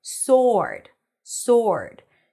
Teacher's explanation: the word sword is pronounced without the W.